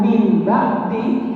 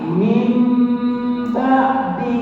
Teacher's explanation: membaca Nun dan tanwin ke ba sudah tidak berbentuk Nun dan tanwin tapi sudah berbentuk berganti menjadi mim itulah perpindahan dari tanwin ke mim ini disebut dengan iklf maka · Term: iqlab